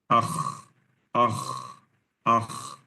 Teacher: Tapi lama suara sama ghain juga, karena ghain dan kha, dua-duanya rakhawah. Mengalir suara.